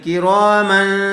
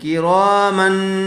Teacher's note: یہاں تنوین کے بعد حروف اخفا میں سے کیا ہوا ہے؟ کاف آیا ہوا ہے، اس لیے غنّے کے ساتھ اخفا کر کے پڑھیں گے